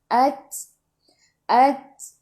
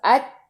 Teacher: At masuk ke dalam ta, sukun dan bunyikan sedikit. Keluarkan sedikit angin sebab sifat huruf ta hamas.